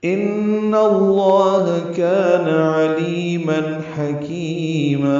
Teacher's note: ان اللہ میں نون مشدد پہ غنہ، علامہ اس میں جلالہ پر، کان میں کاف باریک الف مدہ ہے.